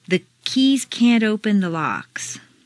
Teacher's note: If you have trouble with can't before a word that starts with a vowel, such as open, put in a very small d. · Make the negative can't sound very short and stress both can't and the verb.